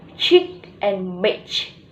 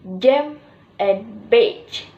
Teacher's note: udara yang diblokir dengan lidah tepat di luar alveolar ridge, kemudian dilepaskan sebagai fricative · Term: affricate